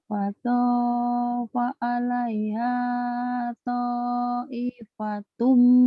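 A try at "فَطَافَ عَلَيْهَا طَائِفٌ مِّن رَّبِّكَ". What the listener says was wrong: Taifum, nggak ada taifatum. Taifum, ayo.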